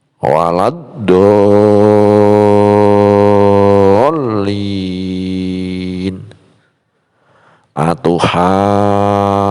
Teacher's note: mad tabi'i bertemu tasydid dan panjangnya 3 alif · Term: mad lazim musaqqal kalimi